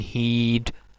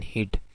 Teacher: the vowel in heed is uh, longer in length as compared to the vowel in hid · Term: vowel length